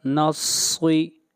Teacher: صاد حروف استعلاء میں سے ہے، صاد کو موٹا پڑھا جائے گا